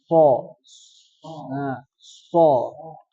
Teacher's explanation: tajamnya suara atau nyaringnya suara ketika mengucapkan hurufnya karena disebabkan dia keluar dari celah yang sempit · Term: saofir, sifat shofir